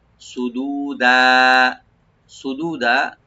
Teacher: সোয়াটাকে deep করে দু এক আলিফ টানবেন